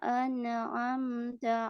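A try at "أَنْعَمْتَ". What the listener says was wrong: Jangan memantul, jangan an'am, tapi an'am, an'amta, an'amta.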